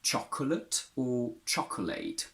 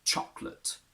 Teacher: the second O, the one after the C, disappears completely. It doesn't give any sound, not even a schwa, and it's not even an option.